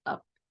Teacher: Y esta que tenemos acá, la U, yo diría que es como una U alargada cuando decimos up. Es una U que quiere ser una O, por así decirlo.